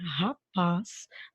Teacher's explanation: Quando eu falo a palavrinha rapaz, né, a sílaba tônica dessa palavra é o paz.